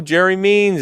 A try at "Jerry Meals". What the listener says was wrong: Jerry Meals. It's not Means. It's Meals.